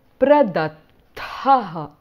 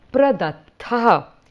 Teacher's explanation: You notice the visarga at the end of the tha.